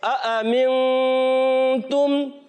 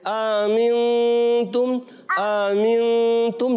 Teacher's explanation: اور یہاں ہے تحقیق. تحقیق کہتے ہیں دونوں حمزاؤں کو خوب واضح کرنا, دونوں حمزاؤں کو خوب واضح کرنا, ظاہر کرنا.